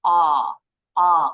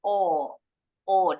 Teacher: kalau orang Amerika bilangnya daughter jadi bunyi aunya lebih a a kalau orang Inggris lebih monyong o o